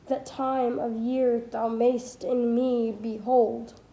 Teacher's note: with syllables two four six eight and ten stressed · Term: iambic pentameter